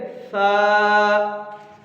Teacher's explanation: با، تا، سا۔ سٹی اس کی ختم کریں گے۔ زبان کی نوک کو اوپر والے سامنے کے جو دانت ہیں اس پہ لگائیں گے۔